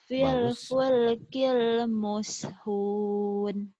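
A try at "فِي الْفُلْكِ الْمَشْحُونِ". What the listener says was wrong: Muskun, mana muskun? Mashun. Fil fulkil mashhun. Maskun.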